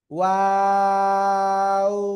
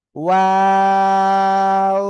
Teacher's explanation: শুরুতেও দুই ঠোঁট গোল হবে, মাঝখানে দুই দিকে প্রসারিত হবে, শেষের দিকে এসে আবার দুই ঠোঁট গোল হবে।